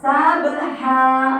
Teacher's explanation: Pengucapan huruf h itu di tengah tenggorokan.